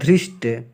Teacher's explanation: यह मूर्धन्य स है जिसको षष्ठकोण का स कहते हैं। इसको हम ध्यान देंगे यह आधा स और ट मिलके बनेगा धृष्ट।